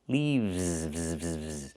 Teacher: We use the letter V and pronounce it VV VV plus the S making a Z sound like in zebra.